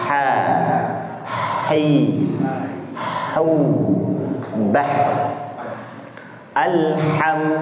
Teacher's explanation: ha itu posisinya katupnya menghimpit saja, tidak menempel. Kemudian didorong dengan udara. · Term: huruf ha